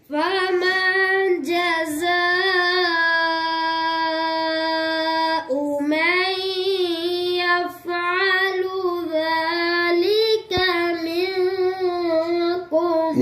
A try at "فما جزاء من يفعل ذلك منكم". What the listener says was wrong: या फा पर कलकला कर दिया है